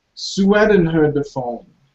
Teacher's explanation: there is a slight w a light w